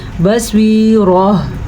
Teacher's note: گول تا ہا بن گئی ہے، تو یہاں پہ ہا کی آواز ضرور آنی چاہیے